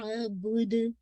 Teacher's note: दाल पे कलकल आवाजी कीजिएगा इंशाल्लाह